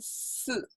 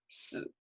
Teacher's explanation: same syllable, just different tones. 四, falling tone is number 4. 死, low tone is to die.